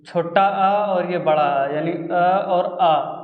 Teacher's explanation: इनको हम लोग कंठ बोलते हैं क्योंकि ये कंठ से निकलते हैं